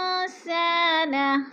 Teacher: सा के ऊपर अलिफ मद्दा है, अलिफ मद्दा को भी खींच कर पढ़ना है।